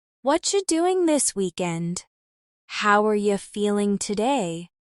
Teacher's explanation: In casual American speech, what are you often becomes whatcha.